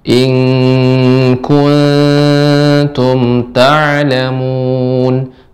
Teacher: Nam ikhfa pada kaf jadi eng. Ibu ing tapi tipis tidak naik.